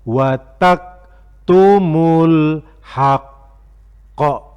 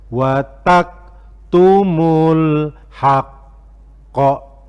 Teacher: karena qaf itu huruf qalqalah, maka bacanya harus dikolkolahkan. Kemudian karena al-haqqo itu bertasdid, tasdid itu qafnya double, al-haqqo.